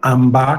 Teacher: Esse A inicial fica nasalizado